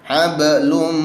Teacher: Mim di situ idgham bi gunnah, ada nun mati bertemu dengan mim, dibaca dengan 2 hingga 4 ketukan, yakni melebur, nun matinya dibuang langsung masukkan ke mim.